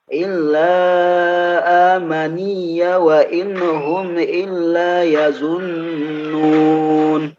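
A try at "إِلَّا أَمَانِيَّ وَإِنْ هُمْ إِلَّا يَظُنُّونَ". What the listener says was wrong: Baik, untuk hamzahnya illa hamzah ama. Nah, jadi yang dipanjangkan di mim. Ama, a-nya tidak dipanjangkan.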